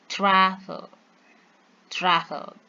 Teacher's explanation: in this word travel, they stress in the first syllable